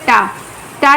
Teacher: ये मूर्धन्य है, स्पर्श है, आघोष है, अल्प प्राण है।